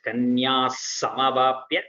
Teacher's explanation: it is just sakara. You don't have to give the ha for visarga. It is just kanya samavapya, sa with sa.